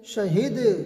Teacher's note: وقف بالاسکان مع القلقلہ، مطلب ہم نے اسکان کیا قلقلہ کے ساتھ